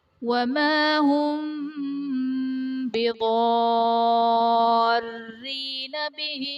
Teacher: بِضَارِّينَ میں ضاد حرف مستعلیہ ہے، پر پڑھا جائے گا، الف سے پہلے ضاد پر زبر، الف مدہ کا قاعدہ اور حرف مدہ کے بعد سکون اصلی یعنی تشدید آ رہی ہے تو یہاں پر مد لازم کا قاعدہ ہوگا۔